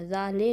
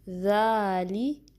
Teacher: اور اس کے لیے آپ نے کوشش کرنی کہ لے نہیں پڑھنا، ذا لے نہیں، ٹھیک ہے، لی، ٹھیک ہے، کسرہ کے لیے مکمل جو ای کی ساؤنڈ ہے وہ آنی چاہیے، ذالی۔